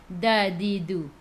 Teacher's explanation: Okey, huruf da, di, du tu makhraj dia hujung lidah menyentuh belakang gigi atas dan juga gusi sekali. Maksudnya di tengah-tengah sentuh.